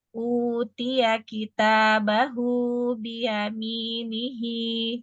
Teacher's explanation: Pada kata utia, ya-nya nggak panjang. Terus, Bia juga nggak panjang.